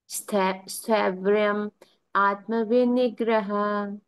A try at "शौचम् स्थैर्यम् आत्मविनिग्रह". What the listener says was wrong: शौचम रह गया, शौचम स्थैर्यम आत्म विनिग्रह।